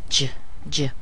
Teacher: We have the very small sound in the beginning and the long, strong sound at the end.